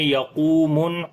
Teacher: قاف کو موٹا پڑھیں گے، واو مدہ ہے، نون کے اوپر شد ہے، غنہ کریں گے